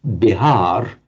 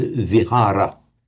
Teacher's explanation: the V of Sanskrit and Pali very often turns up as a b. I mean, even in Pali itself sometimes, but frequently in modern Hindi, it's going to turn up as a b.